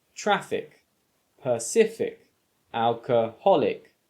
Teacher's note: rule number four if a word ends in ic or ick the stress is placed on the syllable before the ick ending or in other words the penultimate syllable